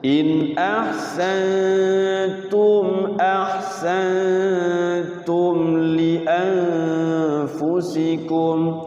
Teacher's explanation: Jadi mim sukunnya nggak boleh ditahan, nggak boleh dilamakan. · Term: idhar syafawi